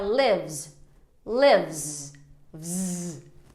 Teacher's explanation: é um som de Z. Por quê? Porque o que vem antes é um som de V.